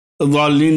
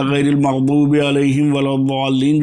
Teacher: جی چبانے والی جو داڑھ ہے جی زبان کے کنارے کو اوپر کی داڑھ سے ملا کر کے واد نکالا جاتا ہے